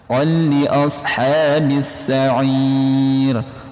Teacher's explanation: Qul, tanwin bertemu fathatain atau tanwin umumnya bertemu dengan huruf lam. Hukumnya idgham bila gunnah, tanpa dengung, teman-teman.